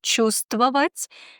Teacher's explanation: Например, в слове «чувствовать» мы не слышим букву «в». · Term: непроизносимыми согласными